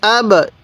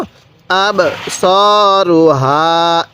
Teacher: এরপরে হামজা লাগবে এই বায়ের সাথে আব, এই বাটা একটু ধাক্কা দিয়ে পড়ব কারণ বাটা হলো কলকলা হরফ